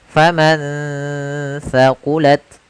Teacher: Kemudian contoh yang terakhir pada lafal faman thaqulat, yaitu ada nun sukun bertemu dengan huruf tha, maka nunnya disamarkan ke huruf tha. Faman thaqulat, sambil ditahan gunnahnya.